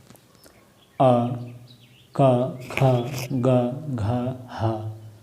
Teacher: अ, क, ख, ग, घ, ह और विसर्गों का उच्चारण कंठ से